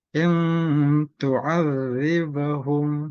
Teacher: nun mati bertemu dengan huruf ta, salah satu dari 15 huruf yang dibaca dengan samar dan dengung. Bisa ditahan 2 atau 3 harokat. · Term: hukum ikhfa